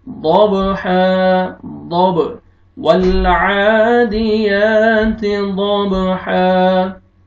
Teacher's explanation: ضب, हा अलिफ मद्दा है, आपने हा को खींचना है, अलिफ से पहले फतहा वक्फ की सूरत में।